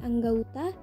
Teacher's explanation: Bunyi fonem o dilafalkan dengan diftong au